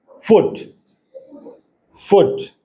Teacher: lower lip जो है जब हम अपर टीथ को टच करके बोलेंगे तो इंग्लिश का साउंड निकलेगा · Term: लेबियो डेंटल